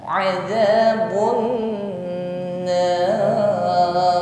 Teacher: ghannah akmal, bunyi dengungnya paling sempurna